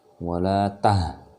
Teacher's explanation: Jadi kalau dia yang ha besar dia baru keluarnya dari dada.